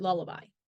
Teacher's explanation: However, unlike other consonants where the airflow is obstructed in the center of the oral cavity, for L, the sides of the tongue are lowered, allowing airflow to pass over them, producing a lateral sound. The L makes the L sound like at the beginning of the word lullaby. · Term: voiced lateral liquid